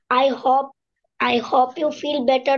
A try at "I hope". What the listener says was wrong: hope না, I hope, not hop. Hop মানে হচ্ছে লাফানো, ব্যাঙের মতো লাফানো।